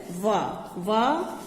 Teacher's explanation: आप बोलकर हम देखते हैं, जैसे वा, तो दांत से भी हमारा स्पर्श होता है जीभ के द्वारा, और ओष्ठ का भी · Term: दंतोष्ठम